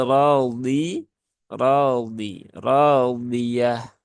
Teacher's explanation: lidah Sisi lidahnya nempel ke langit ee ke sisi Begini Nah pangkal lidahnya itu juga dinaikkan dan tengah lidahnya juga dilengketkan ke langit-langit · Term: huruf dad